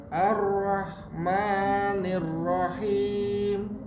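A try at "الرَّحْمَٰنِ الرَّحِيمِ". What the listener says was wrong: Sudah bagus, tinggal A-nya lebih agak dibuka. Ar-Rahmanir-Rahim. Kalau rajin buka mulut seperti Bapak ini pasti kelihatan hurufnya sudah sifat hurufnya lebih dapat gitu ya. Tapi kalau malas buka mulut itu sampai kapanpun gak akan dapat Pak.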